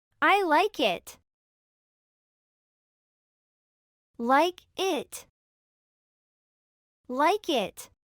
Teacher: si perciben un sonido parecido al de la E entre la K y la T, es porque se trata del sonido de la I corta